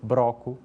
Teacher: existe uma tendência em transformar os encontros consonantais com le em encontros consonantais com re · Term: rotacismo